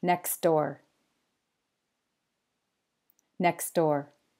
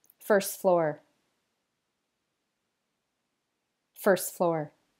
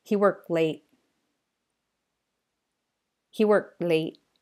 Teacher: try not to pronounce the T sound at the end of the first word